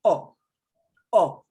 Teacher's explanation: makes only that sound oh it's like a letter oh but it's not like we say oh we're going oh it's shorter